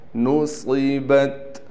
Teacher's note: صاد کو موٹا بھی پڑھنا ہے اور صاد میں سیٹی بھی نکالیں گے۔ نصبت۔